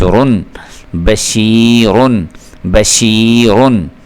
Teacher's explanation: یہ را تنوین ہے، را کو پر کر کے پڑھنا ہوتا ہے